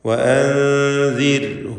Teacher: وأنذر ഇവിടെ സാക്കിൻത നൂനും ശേഷം ദാലുമുണ്ട്. ഇഖ്ഫ ഹഖീഖി എന്ന നിയമം അനുസരിച്ച് നൂനിനെ അവ്യക്തമാക്കി മണിച്ചുകൊണ്ട് ഉച്ചരിക്കണം. വഅൻദിർഹും റായിന് തർക്കീഖ് കൊടുക്കണം.